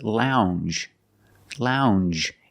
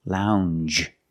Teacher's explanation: it's a regular n plus the soft J sound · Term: regular n plus the J